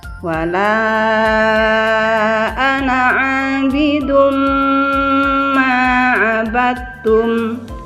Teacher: Kemudian yang kedua yaitu idgham bi gunnah. Idgham bi gunnah ini adalah dibaca dengung. Ya, huruf idgham bi gunnah ini ada 4, yaitu ya, mim, nun, waw.